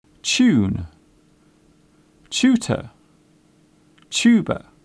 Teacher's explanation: The first part of the word sounds like chair. It is common in British English to pronounce the TU sound as ch.